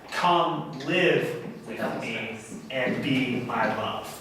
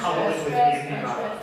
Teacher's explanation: So both come and live are stressed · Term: spondee